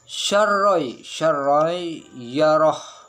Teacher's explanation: tanwin bertemu dengan huruf syin. Jadi itu hukumnya ikhfa hakiki. Harus didengung tapi disamarkan.